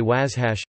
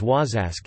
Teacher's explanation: In some dialects of Saulteaux (Plains Ojibwe), the sounds of ⟨sh⟩ and ⟨zh⟩ have merged with ⟨s⟩ and ⟨z⟩ respectively.